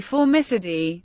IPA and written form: fɔːrˈmɪsᵻdiː (Formicidae)